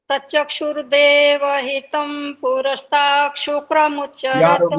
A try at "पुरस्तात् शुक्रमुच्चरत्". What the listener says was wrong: पुरस्तात् शुक्रमुच्चरत है, ये शुक्र नहीं है, ये श बोल रहे हो, छ बोल रहे हो, क्या बोल रहे हो?